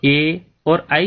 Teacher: जो ए और आई स्वर है वो कंठ और तालु 2 उच्चारण स्थानों के मिश्रण से बोला जाते हैं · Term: कंठ तालु